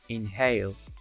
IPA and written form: ɪnheɪl (inhale)